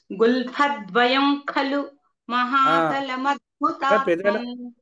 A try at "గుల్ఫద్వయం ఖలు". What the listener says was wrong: అక్కడ పెదాలు మూసారు, ముయ్యొద్దు. గుల్ఫద్వయం ఖలు. ద్వయన్ నకారం రాకూడదు. నకారం నకారం వినపడకూడదు. కఖగఘంగా వినపడాలన్నమాట. వినపడేటట్టుగా చెప్పక్కర్లేదు. మామూలుగా అది సహజంగా న్యాచురల్గా కఖగఘాయే వచ్చేస్తుంది. ద్వయం ఖలు ద్వయం